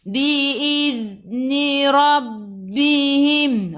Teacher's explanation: Ra baca dengan tebal, ra baris atas, tafkhim. Tekan ke dalam ba ada sabdu rabbihim.